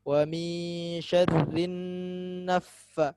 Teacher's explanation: nun bertasydid, dia kondisi paling sempurna, gunnah paling sempurna. Jadi ditahan.